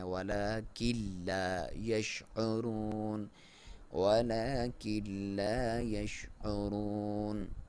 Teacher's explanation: کلا اور یہاں پہ ہم نے کہا تھا لام اور را کے کیس میں آپ نے ناک میں سے آواز نکالے بغیر آپ نے کرنا ہے، غنہ کے بغیر کرنا ہے